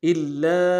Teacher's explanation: لام کے اوپر تشدید زور دیں گے، اور لام کے ساتھ الف مدہ ہے، الف مدہ کے اوپر مدہ عارض ہے، دو الف دار میں کھینچیں گے · الا ان تغمضوا، حمزہ کو نون ساکن کے ساتھ ملانا ہے، نون ساکن میں غنہ کریں گے ان میں. تا کو غین کے ساتھ ملانا ہے، غین کو موٹا ادا کریں گے، میم کو نم سے ادا کریں گے.